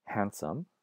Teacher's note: that D in the middle of handsome used to be pronounced but of course not it's not pronounced today